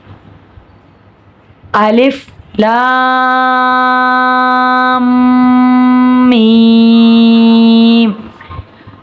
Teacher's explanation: لام پر مد ہے، لام کو 3 الف کے برابر کھینچیں گے۔ میم مشدد ہے، غنہ کریں گے 1 الف کے برابر، اور پھر میم پر مد ہے تو 3 الف کے برابر کھینچ کر پڑھیں گے۔